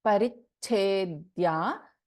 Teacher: in Parichedya, we have Alpaprana Cha as well as Mahaprana Cha.